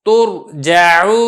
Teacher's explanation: را ساکن ہے پہلے پیش ہے تو آپ را کو پر کریں گے ترجع۔